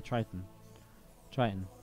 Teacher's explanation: it's more like Triton without a hard second T sound